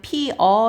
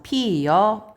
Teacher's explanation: 반모음이 첨가가 돼서 이중모음 모양으로 바뀌는 거라고 했어요. 그래서 피여 이렇게 된다고 했죠. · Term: 반모음 첨가